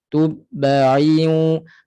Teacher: Hidgham ma'al gunnah. Tanwin jumpa dengan waw. Masuk ke waw dan dengungkan dua harakat.